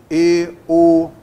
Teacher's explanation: o timbre fechado, é quando você consegue fechar um pouco mais, justamente os lábios